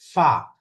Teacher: উপরের দাঁতের আগা নিচের ঠোঁটের মাঝখানে লাগবে